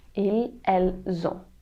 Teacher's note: Be careful not to forget the liaison between the S and the vowel. It's very important when the verbs start with the vowel to have this connection between the S and the vowel.